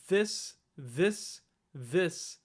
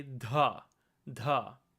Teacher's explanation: your tongue is actually sticking out whereas in Devanagari the tongue does not stick out at all